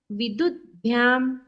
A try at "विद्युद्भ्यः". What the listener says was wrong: तो नहीं द करना है, जहां जहां भ से चालू है ना वो तो का द हो जाएगा। विद्युद्भ्याम विद्युद्भ्यः ऐसे तो का द हो जाएगा।